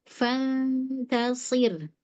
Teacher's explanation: Nunnya di makhraj huruf ta